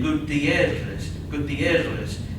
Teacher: a double r and this is where you roll your r's